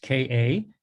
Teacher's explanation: it has to be short and high and in the back of the throat